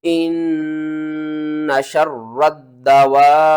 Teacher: نون کو بھی 2 بار پڑھنا ہے، غنے کے ساتھ پڑھنا ہے